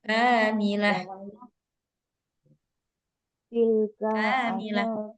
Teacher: kafnya aja yang panjang